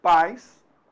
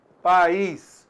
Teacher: Então olha só, pais, quantas vogais? Apenas uma vogal, vogal A. E o I, semivogal, o som decresceu.